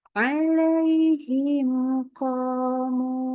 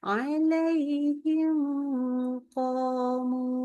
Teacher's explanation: Berarti mimnya harus dibaca jelas. Nggak pakai tambahan gunnah, berarti tidak boleh ditahan bacanya. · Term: idhar syafawi